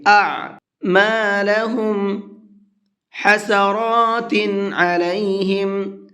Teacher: را کے اوپر کھڑا زبر ہے، اس کو پر کر کے پڑھیں گے اور کھینچ کر کے بھی پڑھیں گے تھوڑا سا